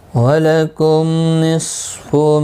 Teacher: صاد حروف مستعلیہ ہے، پر پڑھا جائے گا